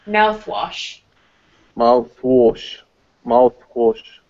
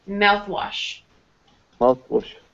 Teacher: toothpaste and mouthwash, the first part of the word will be stronger.